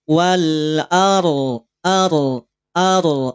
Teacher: antara TS dan juga AS tengah-tengahnya adalah tawasud maka sempurnakan ro saat didahului oleh huruf yang harakat fathah maka ro menjadi tafkhim ro menjadi tebal